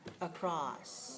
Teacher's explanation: we don't stretch out the s we have to stretch out this the aw part across all right so we want to make the vowel sound